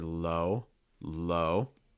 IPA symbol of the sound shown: oʊ